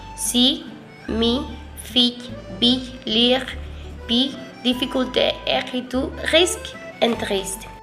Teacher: le I est une voyelle fermée et antérieure, ce qui signifie qu'elle est prononcée avec la langue lèvre et vers le parler, par l'avant de la langue bouche. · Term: Voyelle I